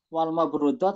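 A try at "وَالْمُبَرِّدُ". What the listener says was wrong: Wal mubarradu. Iya, harokatnya kebalik.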